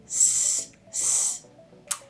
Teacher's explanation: Now there's the second way to produce the S, and it's with the tongue tip down behind the bottom of the teeth. And so how that looks is S, S.